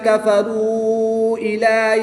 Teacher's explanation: واؤ ساکن سے پہلے را پر پیش ہے تو یہاں پر واؤ مدہ ہوگا۔ واؤ مدہ کے بعد حمزہ دوسرے کلمے میں ہے تو یہاں پر مد منفصل ہوگی، 2 سے 3 الف تک کھینچ کر پڑھیں گے